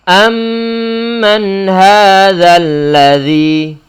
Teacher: Mim sukun yang ada pada kata am kemudian bertemu dengan mim yang berharokat pada kata man. Maka mimnya yang sukun perlu diidghamkan dalam huruf mim yang kedua sehingga menjadi satu huruf mim yang bertasydid. Muncul bacaan gunnah dan gunnahnya adalah gunnah yang paling sempurna. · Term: idgham mimi